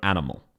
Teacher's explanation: It is very flat. There is no emphasis. Each of the syllables is the same length.